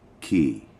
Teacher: If you say it low, it means to ride. But if it's a falling tone, it means shit. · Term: low tone